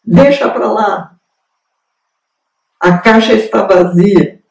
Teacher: Então, deditongou porque apagaram a semivogal. Usualmente as pessoas apagam a semivogal, ou seja, deditonga. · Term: deditongação